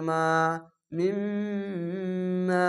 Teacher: জাবরের পরে খালি আলিফ এক আলিফ টেনে পড়বেন